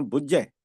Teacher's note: ਮਤਲਬ ਪਿੱਛੇ ਝਜਾ ਨਹੀਂ ਬੋਲਿਆ ਜਾਂਦਾ ਝਜਾ ਜਜੇ ਦੀ ਆਵਾਜ ਦਿੰਦਾ ਹੈ